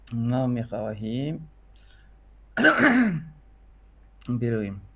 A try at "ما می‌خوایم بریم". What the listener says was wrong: برویم. اب ہا با حذف ہو جاتا ہے. ما میخوایم.